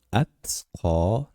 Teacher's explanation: Ta undosh qalqala qilinmaydi. Shuning uchun Atqo deb aytamiz.